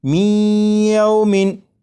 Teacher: یہ جو آواز ہے می ای، یہی ادغام ہو رہا ہے، اور ادغام اس طرح کہ نون ساکن کو یا میں شامل کر کے پڑھا جا رہا ہے